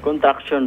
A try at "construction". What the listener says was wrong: Cons. Lagyan mo na S. Cons. Dali, cons. Traction.